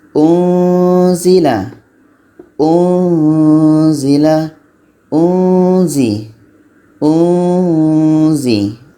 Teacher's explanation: Ada bunyi samar-samar. Ketika kita sebut nun mati seolah-olah kita sudah merasakan huruf zai.